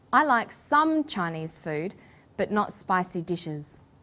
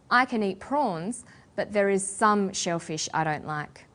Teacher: we put the stress on the word some